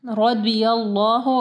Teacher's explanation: रॉ को heavy पढ़े, रज़ी अल्लाह नहीं पढ़ना, द्वाद को हैवी पढ़े। रदियल्लाहु, अल्लाह का नाम जो है वो पुर पढ़ा जाएगा, हैवी पढ़ा जाएगा क्योंकि या के ऊपर ज़बर है।